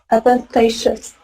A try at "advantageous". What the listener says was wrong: Excellent. Yeah, because most people will say instinctively advantages.